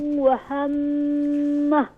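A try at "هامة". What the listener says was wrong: مد Look, see you mad make a stretch, make long, 5 finger long.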